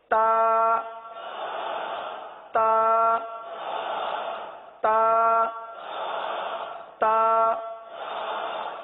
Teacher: تو تا کے اندر سختی ہے, شدت ہے. تو اس کو شدت کے ساتھ ادا کریں گے.